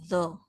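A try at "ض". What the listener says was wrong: Jangan bo. Ujung lidahnya jangan ditempelkan ke ujung gigi seri. Ujung lidahnya tempelkan ke gusi. Nah, karena makhraj yang menekan itu yang tepi kiri kanan.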